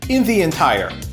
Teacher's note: we have in the, running together and linking to entire